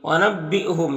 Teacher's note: حمزہ ساکنہ ہے تو جھٹکا لگے گا